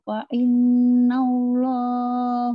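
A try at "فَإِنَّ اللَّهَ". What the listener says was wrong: Fa innallaha bukan hu ya.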